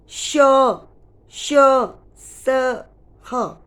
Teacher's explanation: जब आप अपने मुंह के पास हाथ को रख के देखिए और बोल के देखिए, श, श, स, ह, तो आप महसूस करेंगे कि मुख से वायु, इन व्यंजनों को बोलते समय मुख से वायु बाहर निकलती है, और जब निकलती है बाहर तो हल्की सी गर्म होती है वायु, हवा, और हमारे मुख से सीटी जैसी आवाज़ आती है, श, श, स, ह, सीटी जैसी आवाज़ आती है। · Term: ऊष्म व्यंजन